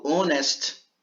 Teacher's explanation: quando eu falo honest, que também inicia por H, eu não pronuncio. Aí eu uso N.